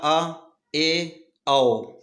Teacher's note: अर्ध विव्रत स्वर, मुंह आधा खुलेगा